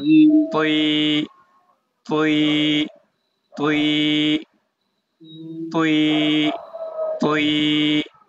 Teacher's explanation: ত হচ্ছে জিহবার আগা দাঁতের গোড়া